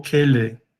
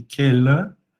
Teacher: E aí ficou, na verdade, uma variação entre E e Schwa, tá? Então, o livro que eu consultei mais para começar falava como Schwa, mas eu vejo depois que também pode ser pronunciado como E.